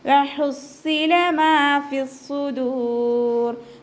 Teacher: മീമിൻ്റെ കൂടെ അലിഫ് മദ് വന്നു, 2 കൗണ്ട് നീട്ടിക്കൊടുക്കുക.